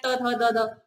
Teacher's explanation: जीभ जो है आपकी वो दांत पर टच कर रही है, यानी स्पर्श कर रही है